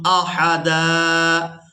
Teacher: وقف کی صورت میں دال پر ایک زبر ادا کریں گے اور اس کو ایک الف مقدار کھینچ کر ادا کریں گے۔